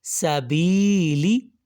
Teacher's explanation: اب سا کو لمبا ہم نے نہیں کیا، لی کو ہم نے لمبا نہیں کیا، شروع اور اینڈ والے لیٹرز کو دیکھیے گا، بی کو ہم نے لمبا کیا۔ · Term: یا مدہ